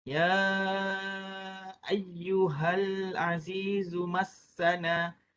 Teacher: kita kena baca 4 ataupun 5 harakat untuk mad jaiz munfasil